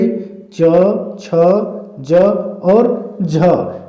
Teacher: च छ ज और झ इन वर्णों का उच्चारण तालू के द्वारा होता है किनके द्वारा तालू के द्वारा होता है और इन्हें तालू वर्ण